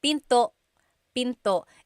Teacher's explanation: And remember, don't forget the glottal stop. Don't forget to stop the sound at the end. That's called a glottal stop.